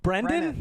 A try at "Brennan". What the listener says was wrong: Brennan. Brennan. Brennan.